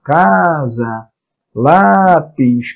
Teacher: Casa é a penúltima sílaba tônica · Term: paroxítonas